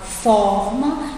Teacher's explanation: No caso, eu falo forma, então eu sei que o for é a sílaba mais forte, certo? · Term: sílaba tônica